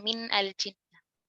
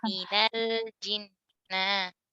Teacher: kalau ada kata min, ya, ketemu sukun setelahnya, itu nunnya difathahkan.